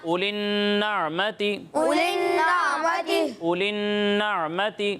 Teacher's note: یہاں نون مشدد میں غنہ کرنا ہے، ٹھیک ہے، اور غنہ کی مقدار 1 الف کے برابر ہے ، تو اس مقدار کو بھی آپ نے پورا کرنا ہے،